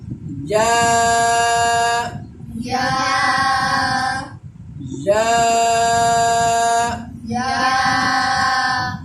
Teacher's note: اس کا مخرج وہی ہے جو جیم اور شین کا ہے، یعنی زبان کا درمیان والا حصہ